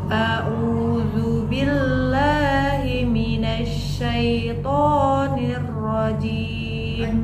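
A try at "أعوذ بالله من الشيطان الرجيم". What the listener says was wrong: Tasydidnya tekan dikit lagi. Minasya.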